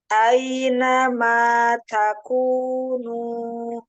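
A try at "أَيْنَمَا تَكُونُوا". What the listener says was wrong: Iya, takunu jangan masuk ke hidung. Aina ma takunu.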